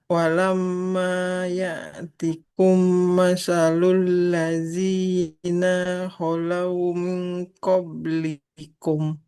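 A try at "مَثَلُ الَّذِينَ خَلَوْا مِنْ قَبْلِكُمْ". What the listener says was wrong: Masalul ladzina. Coba Ibu dari situ. Nunnya nggak boleh panjang.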